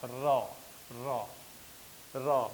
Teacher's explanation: बुझात है कि 2-3 बार जीभ कांपे लायक है।